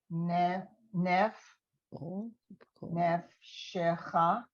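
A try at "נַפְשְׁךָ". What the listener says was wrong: It's actually a ah under the nun.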